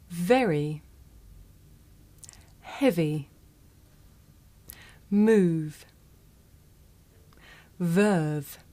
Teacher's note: this is a voiced consonant you can hear it at the beginning of the word of very in the middle of the word heavy at the end of